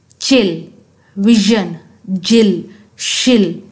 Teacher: जबान का टिप से थोड़ा सा पीछे वाला हिस्सा आपके हार्ड पैलेट से टकराता है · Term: पोस्ट अल्लर, पोस्ट एल्वुलर